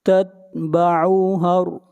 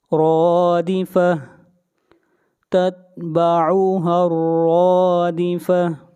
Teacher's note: ہا کو ملائیں گے را کے ساتھ، را کو موٹا پڑھیں گے اور کھینچ کر پڑھیں گے ایک الف کے برابر